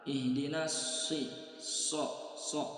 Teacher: huruf shad dalam keadaan kasroh, ya. Huruf shad tetap dibaca tebal. Ihdinas si, so, ya, dia tebal.